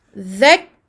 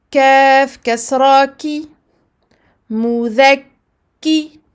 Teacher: Je ne fais pas sortir ici de souffle. Donc je bloque le son, je bloque le souffle.